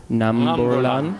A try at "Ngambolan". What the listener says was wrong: A bit in the same way we said Ngayu, it starts with that Nga again. Ngambolan. Ngambolan. Ngambolan.